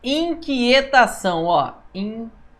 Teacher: Temos um ditongo decrescente aqui. O A é mais forte do que o O. O O é uma semivogal.